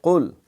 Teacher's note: یہ 2 نقطے والا قاف جو ہے یہ حلق سے ادا ہوتا ہے، اور اس میں قلقلہ کی ایک جو ہے وہ صفت ہوتی ہے، جو ساکن ہو، حریق آواز لوٹ کے آتی ہے۔